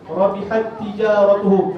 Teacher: ta yang pertama dimasukkan ke dalam ta yang kedua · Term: idgham mutamathilain